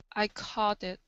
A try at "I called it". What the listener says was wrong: when you're pronouncing that l make sure that you touch the top of your mouth because right now you're saying coddit called